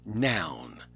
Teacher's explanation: about that a long time ago it's one syllable noun and it's got this o you which means it's a diphthong it's a double vowel sound